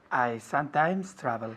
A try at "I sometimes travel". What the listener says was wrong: Con la M, I sometimes. Muy bien, quiero ver los labios juntos. I sometimes travel, no sometimes. Sometimes, las dos M's.